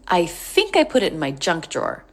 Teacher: So think stressed has a little bit more length.